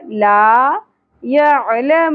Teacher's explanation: عین ساکن عین کو وسط حلق سے ادا کرنا ہے